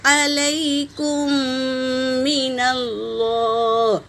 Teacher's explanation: میم ساکن کے بعد میم آیا ہے تو پہلے میم کو دوسرے میم میں ملا کر غنّے کے ساتھ پڑھیں گے، اسے ادغام شفی کہتے ہیں۔